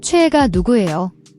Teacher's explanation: The cho has a distinct CHW sound, combining CH and OE. The is often pronounced like we in English way. · AE is an open E sound, like a in cat.